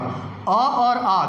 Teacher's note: अब अ और आ का उच्चारण कहाँ से हो रहा है? कंठ से हो रहा है।